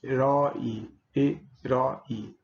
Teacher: a vogal aberta a língua fica abaixado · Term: O aberto